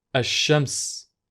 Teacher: where al shams becomes ashames and you instead double the letter sound that follows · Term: sun letters